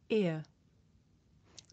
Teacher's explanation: This is a diphthong, a double vowel sound. The shape the mouth makes changes from the beginning of the sound to the end. It's pronounced ear. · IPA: /ɪə/